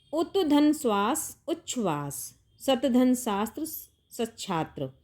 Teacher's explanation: त के बाद ष हो तो ता का चा और श का छ में परिवर्तन हो जाता है